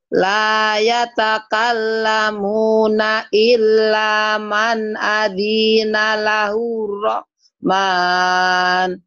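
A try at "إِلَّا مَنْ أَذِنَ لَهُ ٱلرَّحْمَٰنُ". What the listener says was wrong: Adinya pendek dari illa ya. Illa man adina lahur ya. Bukan adina. Alzina. ya, bukan adina. Alzina. Adina pendek.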